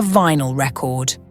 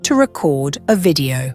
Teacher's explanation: if you stress the first syllable it's a noun as in a vinyl record but if you stress the second syllable it's a verb as in to record a video